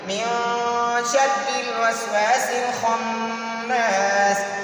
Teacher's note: یہاں پر اب نون ساکن کے بعد شین ہے. شین ان 6 حروف حلقی میں سے نہیں ہے تو اس نون میں ہم اخفا پڑھیں گے، اس پہ ہم غنہ کریں گے